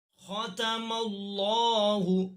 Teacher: لفظ اللہ کو بھی پر پڑھیں، چونکہ لفظ اللہ کے لام سے پہلے حرف یعنی میم پر زبر ہے۔ لفظ اللہ کے لام سے پہلے حرف پر زبر یا پیش کی صورت میں لفظ اللہ کے لام کو پر پڑھتے ہیں۔